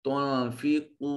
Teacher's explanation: تنفقو نون ساکن کے بعد فا حرف اخفا ہے، نون کو اپنے مخرج میں چھپا کر ادا کریں گے۔ قاف موٹا اور پر کر کے صفت استعلاء کی وجہ سے اس کو مفخم پڑھا جائے گا۔